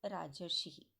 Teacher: राज धन ऋषि, राजर्षि। राज में अ है और ऋषि में री है तो अ और री दोनों मिलकर अर बनाते हैं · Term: गुण संधि